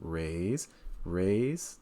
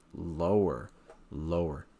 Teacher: full sentence where do you raise and lower your voice notice when I said raise raise that goes up and then I said lower lower that goes down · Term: intonation